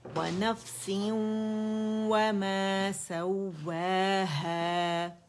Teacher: وَنَفْسٍ وَمَا سَوَّاهَا، واو پہ ہم نے جماؤ دینا ہے، ٹھیک ہے؟ کمپلیٹ رول ہوں گے لپس واو کے اوپر، اور فتح کے اوپر آواز ایک کاؤنٹ کے لیے اوپر جائے گی۔